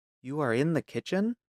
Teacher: a statement with a rising tone becomes a question